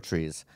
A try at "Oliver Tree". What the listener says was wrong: Not plural. It's just Oliver Tree. It's my real name. But it's Oliver Tree.